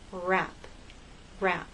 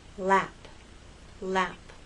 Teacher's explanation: It's like in a small, tight ball. The tongue is more tense for rap, for R, than it is for lap, L.